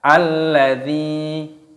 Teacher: dzanya dibaca panjang, ada ya sukun